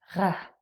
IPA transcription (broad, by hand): ʀ